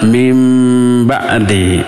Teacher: iqlab nun mati menghadapi ba. Jadi weh nunnya berubah menjadi mimnya